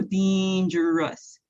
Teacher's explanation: he again uses that long e vowel sound emphasizing the r